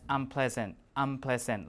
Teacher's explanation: so n is gone and now you see an m instead